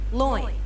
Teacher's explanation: to two vowel sounds that are pronounced within the same syllable you can kind of think of it like gliding from one vowel to the next very quickly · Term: diphthong